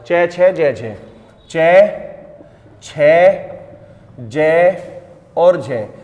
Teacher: जब आप इनका उच्चारण करते हो स्पर्श करते हुए एक रगड़ के साथ बाहर जो है वायु निकलती है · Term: स्पर्श संघर्षी व्यंजन